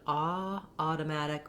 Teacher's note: I recommend ah, automatic, with a little bit of rounding. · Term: the rounded vowel